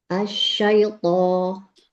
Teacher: Lebih tambahkan lagi itbak pada toknya.